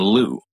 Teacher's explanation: Lou it's different from the English l as in Lou because the English L brings the back and front of your tongue up towards the roof of your mouth Lou and the French one only uses the front of the